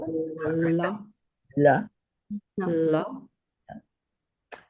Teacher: And the L is dental.